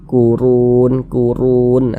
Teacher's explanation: Cuman di sini yang kita temui harokat domah, maka huruf ro-nya kita tebalkan sehingga pangkal lisan kita naik terangkat ke atas ketika kita mengucapkannya. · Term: baca tabkhim